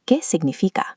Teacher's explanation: observe the single tapped R at the end of repetir and the silent U in significa.